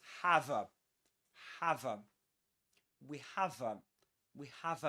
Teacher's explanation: the linking of the final consonants, the v sound with the next vowel sound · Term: catenation